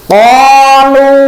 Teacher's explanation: qaf itu makhrajnya dari pangkali lidah. Aqsa lisani wa ma yuhadihi minah nakil a'la. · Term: huruf qaf